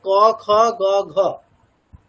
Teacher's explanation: ক বর্গ উচ্চারণ স্থান হচ্ছে কন্ঠ।